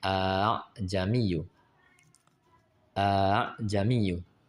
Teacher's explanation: Huruf huruf alif sesudah hamzah diganti dengan hamzah yang berharakat fathah pula dan membacanya dengan suara antara hamzah dengan alif tanpa mad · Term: tashil